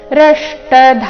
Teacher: ರಷ್ಟದ ರ ಮೇಲೆ ಆಘಾತ